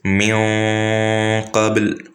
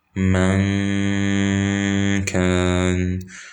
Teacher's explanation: the qaf is mufakhama, thus the noon becomes mufakhama. The kaf is muraqqaqa, and thus the ghunna becomes muraqqaqa.